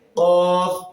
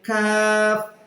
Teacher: জিহ্বার গোড়া থেকে একটু আগে বাড়িয়ে উচ্চারিত হবে। জিহ্বার গোড়া থেকে হবে কফ, মোটা হরফ, একটু আগে বাড়িয়ে হবে কাফ, এটা হচ্ছে পাতলা